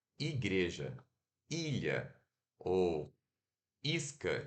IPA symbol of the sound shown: i